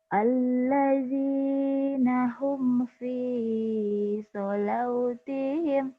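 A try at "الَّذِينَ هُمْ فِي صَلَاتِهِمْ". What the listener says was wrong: Wawunya nggak dibaca. Sholatihim. Alladzina hum fi sholatihim. Wawunya kan nggak ada tanda. Jangan dibaca. disuruh baca yang ada tanda baca. Tidak ada tanda baca jangan dibaca.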